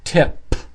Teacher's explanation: not e it's not TP it's tip final sound is p the lips are touching and they push out air this has to be strong